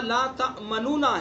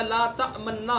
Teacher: پہلے نون کا دوسرے نون میں ادغام کیا، دونوں کا ایک بنا دیا، لا تأمننا ہو گیا.